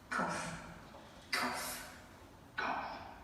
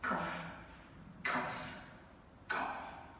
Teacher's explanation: So we could hear an aspirated velar plosive there, and I measured them. They're all well over 60 milliseconds, those bursts, quite long lag, VOT.